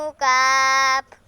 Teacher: জিহ্বার গোড়া থেকে একটু আগে বাড়াইয়া তার বরাবর উপরের তালুর সঙ্গে লাগাইয়া মধ্যখান পেঁচানো কাফ।